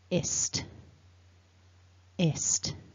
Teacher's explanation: The second syllable has the short I vowel, and then the ending is a cluster, st, st. So the s and the t are both very airy consonants. There should be some air leaving your mouth, and you're not vibrating your throat. So the ending is ist, ist.